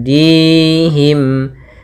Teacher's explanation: Mad thii yaitu adanya kasrah bertemu dengan Ya Sukun kita panjangkan dua harakat